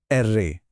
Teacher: जिभेला थोडं कंपण द्याव लागतं